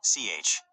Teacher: This is a voiceless palato-alveolar affricate